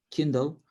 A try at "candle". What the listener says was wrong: Candle. Candle. Candle with an A. Candle. Like a little wax with a fire on top.